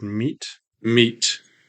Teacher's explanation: spectrogram we have the M sound the m e and then there's a closure and release of the T